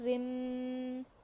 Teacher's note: اس کو تنوین کہتے ہیں. تنوین کے بعد حروف یرملون جو کہ حروف ادغام ہے اس میں سے ادغام میم آیا ہے تو ہم یہاں گنے کے ساتھ ملا کر پڑھیں گے. گنا مطلب آواز کو ناک میں تھوڑی دیر تک روکنا، جیسے رو میم زیر رم.